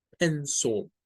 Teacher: El schwa aquí llega a ponerse en donde está esa I.